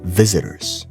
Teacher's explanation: You notice how I said visitors? The T becomes a D.